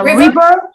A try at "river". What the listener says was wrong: No, it's not reaver. It's river. The sound in river is very short. It is not E. It's it.